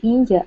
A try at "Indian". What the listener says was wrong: Okay, so try to remember it's Indian. So try to pronounce the N here. Indian.